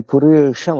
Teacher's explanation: పురీషం మహాప్రాణం, ఇందులో మూర్ధన్య ష, టటడాడ ష, ష నాలుక పైకి ఎత్తినప్పుడు వచ్చే ష, మూర్ధన్య ష, శతపది ష, అది పురీషం అనాలి.